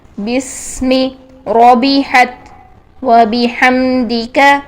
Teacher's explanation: بی کو بے نہیں کرنا ہے، اس کو بی ہی رکھنا ہے، ای کی ساؤنڈ میں لے کے آنا ہے